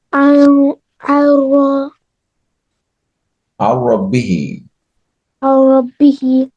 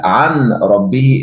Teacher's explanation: because of Idgham, you merge the Noon and the Ra together